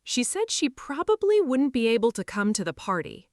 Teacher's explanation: Stressed words said probably, able, come party